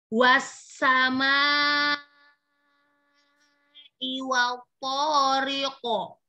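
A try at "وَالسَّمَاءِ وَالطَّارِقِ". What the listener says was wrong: Wanya langsung masuk ke po. Jangan riqo, riqo. Ri-nya jangan dipanjangkan. Langsung ya, karena kofnya kan kol-kolah, dipantulkan. Ya, kof sukunnya. Jadi jangan memanjangkan harokat. Ya, jangan dipanjangkan harokatnya.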